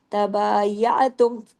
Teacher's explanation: आइन आवाज गले में जाए, तबायातुम तमाम बारीक हुरूफ हैं।